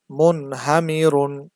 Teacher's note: এখানেও নুন সাকিন আসছে, এরপরে হা আসছে, এই জন্য বানান করলে যেমন হয় ওইভাবেই গুন্না ছাড়া স্পষ্ট করে পড়তে হবে।